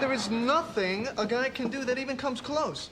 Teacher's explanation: Ross said there's nothing a guy can do and he put that stress on nothing